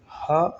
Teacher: हा अघोष नहीं होगा, यह घोष होगा या फिर इसे कहेंगे कि सघोष होगा